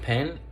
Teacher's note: the word pen, the sound of the phoneme P, it has like a stronger puff. Meanwhile, in the word stop, it does not.